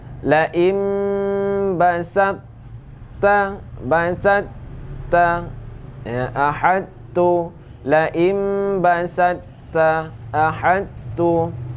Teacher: ta idgham ke dalam ta ya, dengan tetap dengan sifat itbaq, namun sifat qalqalah ditiadakan ya. Yaitu dengan sifat itbaq.